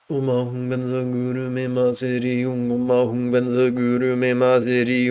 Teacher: in the Tibetan pronunciation, our R's are soft. We do not roll them.